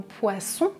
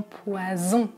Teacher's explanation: le s comme dans poisson qui est sourd et le z comme dans poison qui est voisé. J'utilise la voix.